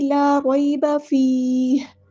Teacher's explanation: فا پہ مد اصلی ہو رہی ہے، یا ساکن سے پہلے زیر ہے، 2 حرکت 2 کاؤنٹس لمبا کرنا ہے